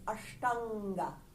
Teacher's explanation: onosvara tells us to nasalize the vowel sound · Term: anuswara